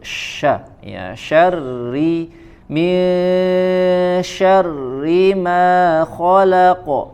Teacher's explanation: Jadi jangan syarri misya ya, tidak dibaca tebal atau menggema suaranya tapi dia ditipiskan, syarri ma ya. Kemudian huruf shin dia punya sifat tafasyi, yaitu menyebarnya angin atau udara di dalam mulut